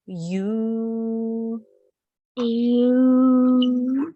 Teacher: 2 seconds or 2 counts because of the inverted dhamma.